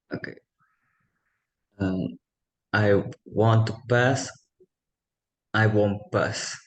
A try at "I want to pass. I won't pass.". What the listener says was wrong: Now say it faster, the two together. No space between the two sentences.